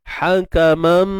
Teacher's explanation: Okey. Hakamam, itu masuk idgham, masuk terus dengan dengung kadar 2 harakat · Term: idgham bi gunnah kamil